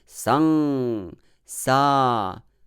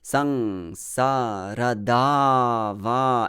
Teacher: the second syllable, sa, it is heavy syllable because of the long vowel